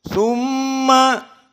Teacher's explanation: summa mim musyaddadah wujubul gunnah. Summa 2 harokat.